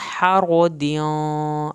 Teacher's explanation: हा को हल्क से पढ़ना है , हारो, रा को पुर करना है, हरदियाँ, यहाँ पर दियाँ